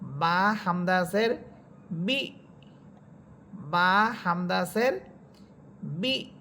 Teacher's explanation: হামজা হরফটা সাকিন হচ্ছে তখন আগের হরকত ওই হামজাকে শক্ত করে ধরবে এবং ধাক্কা দিয়ে পড়বেন